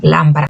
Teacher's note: lámpara, não nasaliza com M